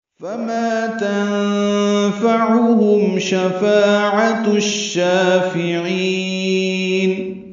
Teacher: تنفع میں نون ساکن کی بعد فا کی وجہ سے اخفا ہے، عین وسط حلق سے ادا ہوگا اور ہا اقصى حلق سے. میم ساکن پہ اظہار شفوی ہے. شفاعہ میں فا الف مدہ ہے، عین وسط حلق سے ادا ہوگا، تائے مربوطہ جلدی اور معروف پڑھیں گے اور اس کو شین سے ملا دیں گے.